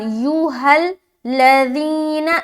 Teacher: کہاں؟ یا میں کھینچ رہے بہت زیادہ کیونکہ مد ہے، اور ذی میں کھینچ رہے کیونکہ یا ساکن سے پہلے زیر ہے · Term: یا مدہ